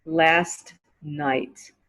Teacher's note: You didn't hear the T at the end of last.